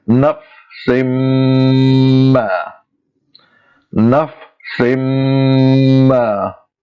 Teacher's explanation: we have to stretch that sin sound 2 times its original length